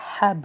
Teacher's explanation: حا حلق سے ادا کیا جائے گا، با پہ قلقلہ اور لام کو نارمل پڑھا جائے گا